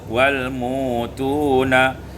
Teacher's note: Pada ayat 162 al-mu'tuna ibdalul hamzati wawan, ditukar hamzah dengan waw menjadi wal mutuna.